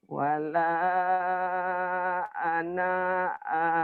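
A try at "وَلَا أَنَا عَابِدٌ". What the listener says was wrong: Pendek. Ana di situ pendek. Wala ana'a. Wala ana'a.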